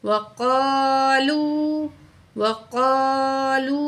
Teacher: وقا وقا، لام پیش واو لو، واو ساکن ہے، پچھلے الفاظ پہ پیش ہے، 1 کاؤنٹ کھینچیں گے، واو مد ہے۔